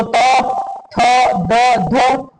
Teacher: तो जैसे कि कह रहे हैं कि जी्हा की नोक ऊपरी दांतों को स्पर्श करती है। जैसे कि ये जीभ हमारी जो ऊपर वाले दांत है ये उनको स्पर्श करती है तो वहां पर दंत व्यंजन हो जाएंगे